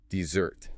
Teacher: for dessert, the sweet cake you eat after dinner, the weight shifts to the very end.